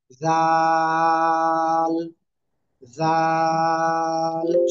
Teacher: জিহ্বার আগা, সামনের উপরে দুই দাঁতের আগার সাথে লাগিয়ে তিন আলিফটা নিয়ে উচ্চারণ করতে হবে।